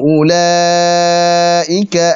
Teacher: Sekarang, sesuatu seperti 'ulaaika' adalah wajib muttasil yang gila. Jadi, vokal panjang diikuti oleh hamzah dalam satu kata.